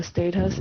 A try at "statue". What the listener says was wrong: It's not status, it's statue. Statue.